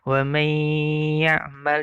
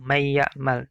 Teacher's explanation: Wa may ya'mal, jadi tahan. Wa may ya'mal, tidak langsung may ya'mal, tapi ada hunnahnya di situ. Hunnahnya itulah ditahannya.